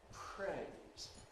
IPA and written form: pr̥eɪz (praise)